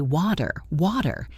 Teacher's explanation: when a T is between two vowel sounds, it becomes what we call a flap T, which sounds very much like a quick, soft D